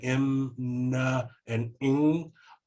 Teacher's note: all of that is diverting up into your sinuses kind of out through your nose